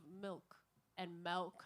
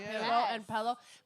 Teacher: the short I, will naturally bleed into a flatter e sound